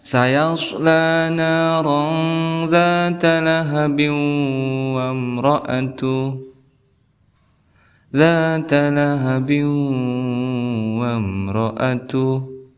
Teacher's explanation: Di sini lafadz lahabiu ini lahab ada harakat kasrah tain, kemudian bertemu dengan waw, maka kita hukumi idgham bi gunnah